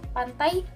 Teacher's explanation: gabungan dua vokal yang diucapkan dalam satu tarikan napas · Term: bunyi diftong